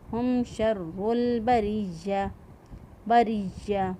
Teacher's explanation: را کے نیچے دیکھیں زیر ہے، اس را کو باریک پڑھیں گے اور یا کو وسط لسان سے یا جو ہے وہ ادا ہوگا، زبان کا درمیان جب اوپر کے تعلق کے ساتھ لگے تو یا ادا ہوگا۔